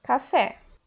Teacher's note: oxítona quando a última sílaba é a mais forte